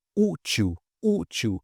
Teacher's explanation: O u aqui, olha, é a sílaba mais forte. E a gente vai ver a regra de acentuação relacionada a isso, tá?